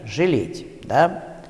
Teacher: после шипящих твердых и «ц» в первом предударном слоге в некоторых словах может произноситься звук средний между «ы» и «э» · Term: «ы» с оттенком «э»